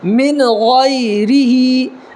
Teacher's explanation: یا ساکن سے پہلے زبر ہے غین کے اوپر تو یالین ہوگا، اس کو نرمی کے ساتھ ادا کریں گے